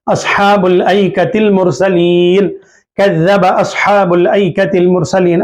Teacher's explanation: اصحاب ال کے بعد لام ہے، با کو لام سے ملا رہے ہیں